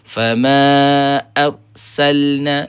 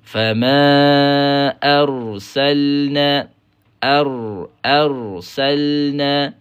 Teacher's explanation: Fama arsalna itu pendek walaupun dah bunyi tebal.